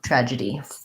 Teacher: we have a schwa there and not die but d tragedy three syllables tragedy long short short